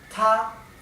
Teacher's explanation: la pronunciación ta con el tono alto